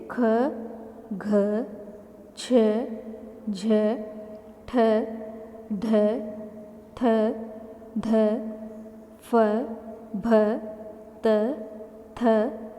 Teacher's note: इनमें अधिक वायु उच्चारित होती है अधिक वायु बाहर आती है मुख से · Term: महाप्राण